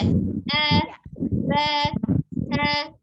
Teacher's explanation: diusahakan untuk di Iqra 1 tidak dipanjangkan ya, karena satu harokat